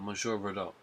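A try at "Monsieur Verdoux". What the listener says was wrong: Monsieur. Don't pronounce the R at the end. It's silent. Why do you say monsieur? It's not a sh. It's a sir. Monsieur. Monsieur.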